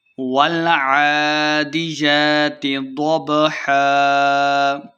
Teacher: والعادیات ضبحا، عین اور یا کے اوپر کھڑی زبر ہے تو ہم نے اس کو 2 حرکات لمبا کرنا ہے۔ ضبحا، ضاد کو موٹا پڑھنا ہے۔